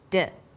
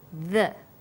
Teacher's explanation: When you articulate d, you can feel your tongue against your tooth ridge, like this, d.